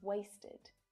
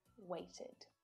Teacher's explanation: weight becomes weighted okay so these ones are kind of simple the extra unstressed vowel sound makes them quite easy to pronounce